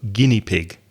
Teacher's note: the EI at the end is not ear it's just II